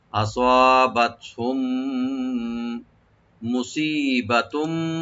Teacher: একে মিম সাকিন পরে যেহেতু মিম আসছে আমরা ইদগাম সবাই করবো, দুইটা মিম একসাথে মিশে যাবে গুণ সহকারে · সোয়াটাকে রাইট দিবেন সিন যেন না হয়